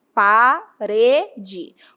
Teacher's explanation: Veja que o re é a sílaba forte. Então, essa palavra apresenta acento tônico, porque está indicando aí que é a sílaba mais forte, é a sílaba tônica.